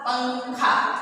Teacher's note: अम को हम अनुस्वार कहते हैं और इसका उच्चारण नाक से होता है।